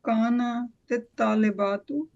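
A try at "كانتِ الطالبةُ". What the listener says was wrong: Yeah, so Kanat, and then in order to connect, sister put a kasra underneath, Kanatit Talibatu.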